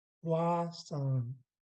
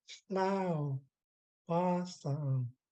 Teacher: And then our tone drops for the song.